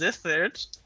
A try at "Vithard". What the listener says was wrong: It's not Zith, it's Vithard. Vith. I can believe that I pronounced it as Z.